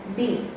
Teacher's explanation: बी में मेरी air block हो रही है और उसमें मेरे लिप्स का यूज कर रही हूँ मैं